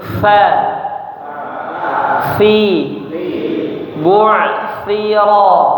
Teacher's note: huruf tha lidahnya keluarkan dari gigi serinya